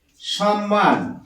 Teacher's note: আমরা এই ম টা উচ্চারণ করছি না এই ম টাকে ডবল দুবার উচ্চারণ করছি